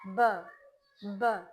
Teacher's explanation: tongue is resting lower, but only the lips are touching